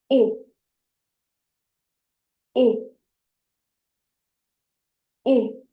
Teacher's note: So when you pronounce it, your tongue is a little higher in your mouth, closer to the front. I. Stretch out your lips a little, and it's a short sound.